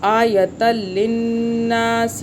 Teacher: تو ہم یہاں پہ غنہ نہیں کرتے لام پہ اور را پہ، ہم ادغام یہاں پہ کر رہے ہیں ، آپس مرج کیسے کر رہے ہیں، آیتل کر رہے ہیں، · آیتل کر رہے ہیں، دو زبر ایک زبر میں بدل رہا ہے